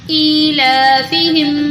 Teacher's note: الف کھڑی زیر ای، حمزہ کے نیچے کھڑی زیر ہے، اس کو بھی لمبا کریں گے اور لام کے اوپر اگین کھڑی زبر ہے، اس کو بھی لمبا کریں گے.